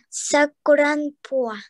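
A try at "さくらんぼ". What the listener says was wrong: Да, только последняя буква не бо, а не по, а бо. Сакуранбо. Бо. Бо.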